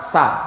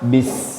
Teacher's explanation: Ketika harokat sa, suara s-nya pendek sa. Tapi ketika sukun bis, panjang dia.